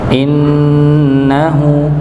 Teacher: huruf nun yang dia bertasydid maka didengungkan, ditahan terlebih dahulu